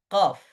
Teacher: di paling ujungnya lisan ada qof